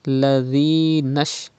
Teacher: There is Ya Madda after Zal. You have to read by stretching up to 2 harakat.